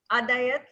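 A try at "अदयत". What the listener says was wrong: Adayata. We all are so used to Hindi that the last akshara, we try to cut it, but that is not the rule in Sanskritam.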